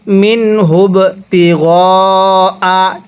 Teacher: এই বায়ের মধ্যে আমরা কলকলা করব, বায়ে যদি সাকিন হয় কলকলা করে পড়তে হয়